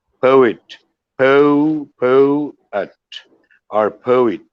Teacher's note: triphthong, three vowel sounds, not diphthong